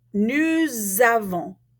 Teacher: because we have a vowel sound at the beginning of avons, we're going to take that S and we're going to turn it into a Z